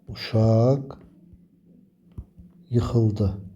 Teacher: Amma ondan sonra sait gələrsə, uşaq yıxıldı. Baxın burda q samiti x səsi verdi.